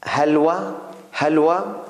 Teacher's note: this Ha is like not H, but a kind of H from throat. Something comes out from throat.